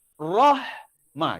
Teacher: Hamas lebihan angin dan bunyi kerana hanya berbaris mati.